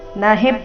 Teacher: ನ ಹಿ ಎರಡು ರಸ್ವ ಹಿ ಮೇಲೆ ಸುಂದರವಾದ ಆಘಾತ